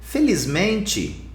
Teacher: there's a Z sound because M is a voiced consonant